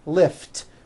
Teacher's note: Lift ends with an unvoiced T.